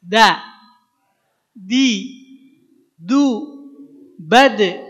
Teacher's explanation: Kalau huruf dal, dal, ujung lidah ke pangkal 2 gigi seri atas.